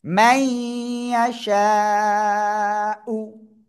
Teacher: মিম ইয়া জবর মাই, নুন সাকিনের পরে ঈদগমে বা গুন্নার অক্ষর ইয়া গুন্নার সাথে মিলিয়ে পড়বো